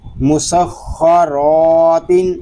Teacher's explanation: اس میں جو قاعدے لگ رہے ہیں وہ ہے خوا پر خوا مشدد، را پر الف مدہ تنوین۔ یہاں را اس لیے پر ہے کہ را کے اوپر زبر آ گیا ہے، الف مدہ اس لیے ہو رہا ہے کہ الف سے پہلے زبر آ گیا ہے۔